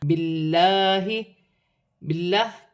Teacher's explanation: باللہ کی لام باریک پڑی جائے گی کیونکہ لام سے پہلے زیر آ رہی ہے